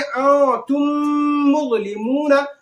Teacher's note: इसमें गुन्ना होगा, यानी आवाज नाक में जाएगी